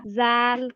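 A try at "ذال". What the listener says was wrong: জাল আর নরম হবে, হ্যাঁ। জাল।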